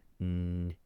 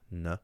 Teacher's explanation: a slender N is further back than an English N